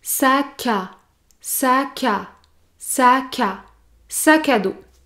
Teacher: pour prononcer le mot sac à dos vous devez effectuer l'enchaînement entre le mot sac et le mot à